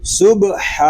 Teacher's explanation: با ساکن ہے، اس میں کلکلا خوب ظاہر ہوگا